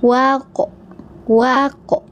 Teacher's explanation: ini huruf tebal jadi o seperti itu, pantulannya adalah o ya.